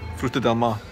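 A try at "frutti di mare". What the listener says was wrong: No, that's in Spanish. It's not del. Del is Spanish. I think it's frutti de mari.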